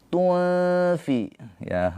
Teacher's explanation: Nun sukun atau tanwin bertemu dengan huruf fa ini adalah ikhfa. Ikhfa hakiki. Nun sukunnya ditahan dua harakat ya.